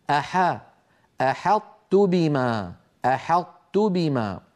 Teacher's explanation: لا تفخم العرب الحاء، بل نرققها